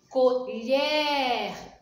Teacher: Colher. Então a sílaba mais forte, no caso aqui, lher. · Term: oxítona